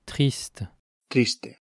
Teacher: In French, it's a guttural sound that's articulated at the back of the vocal tract, usually with a uvular fricative, ra. In Spanish, it's an alveolar tap that's articulated near the front of the vocal tract. triste, triste, Also notice that the French word ends in a consonant sound t, despite the written word ending in an e, while the Spanish word ends in a vowel sound e.